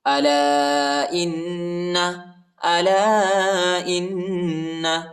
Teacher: لام کے بعد جو الف، اس الف پر چھوٹا مد، اس کو تقریباً 2-3 سیکنڈ تک کھینچیں گے